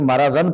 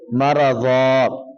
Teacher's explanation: دو زبر جب وقف کے اینڈ پر آئیں تو اس کو ایک زبر آپ غائب کر دینا ہے اور ایک الف کی صورت میں اس کو باقی رہنے دینا ہے، ٹھیک ہے جی۔